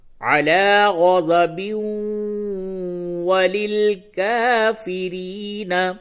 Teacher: با کو واو سے ملا کے پڑھنا ہوگا، تو پھر واو پہ تشدید ہوگا. ایک تو با کو واو سے ملانا ہے، پھر واو کے اوپر زبر ہے. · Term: ادغام